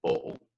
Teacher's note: It's generally in Scots, folk will just use the dark L, and that's where the tongue is pushed up towards the top of the roof of the mouth